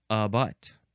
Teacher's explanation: There's double schwa in a butt.